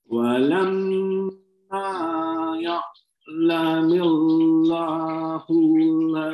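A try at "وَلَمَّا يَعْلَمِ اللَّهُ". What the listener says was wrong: Terus tipis, Pak. Jangan sempat ada bunyi itu, Pak. Ya'lamillah. Jangan ya'lamillahu.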